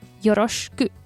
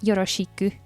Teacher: By the way, when saying よろしく, you don't pronounce the し fully, just as an sh sound